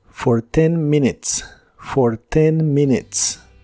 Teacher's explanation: La primera vocal sí suena como una I corta, pero la segunda no suena como U. Es el sonido schwa de inglés y es un sonido vocal muy suave que suena más parecido a una a una E o incluso a otra I, pero muy suave en cualquiera de los casos.